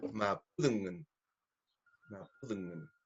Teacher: Es una D interdental. Entonces hay que poner la lengua entre los dientes.